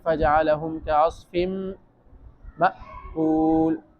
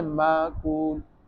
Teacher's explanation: آواز بند ہو گئی۔ اور اس میں سختی بھی ہے، ایک جھٹکا، ایک قسم کا جھٹکا لگتا ہے۔ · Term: صفت شدت